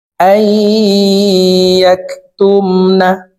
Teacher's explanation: সাকিন অথবা তানউইনকে গুন্নার সহিত মিলাইয়া পড়িতে হয়। তো এখানে দেখুন এই হামজা তাসদিদ ওয়ালা ইয়ার সাথে গুন্নার সহিত মিলাইয়া পড়ব মাঝখানে জজমওয়ালা নুন বাদ পড়ে যাবে